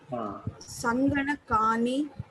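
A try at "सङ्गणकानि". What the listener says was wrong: Sanganakani. Not Dirgha. Raswa. Sanganakani. Sanganakani.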